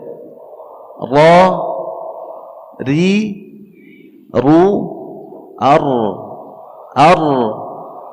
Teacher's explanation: Maka yang kita harus ketahui bahwa tempat keluarnya huruf ra ya, ujung lidah ke belakang ya, ujung lidah kita sedikit ke belakang ya, bertemu dengan langit-langit bagian atas ya.